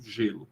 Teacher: A língua, a ponta da língua, ponta não, essa parte da língua, né, a parte entre a lâmina da língua e o ápice, vão na direção da região medial entre o alvéolo e o palato, gelo, por exemplo. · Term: alvéolo palatal